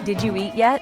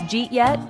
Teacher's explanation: Listen to how people say, Did you eat yet? It often becomes Jeet yet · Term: connected speech